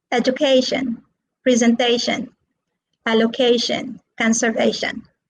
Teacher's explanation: so all these words are stressed on the third syllable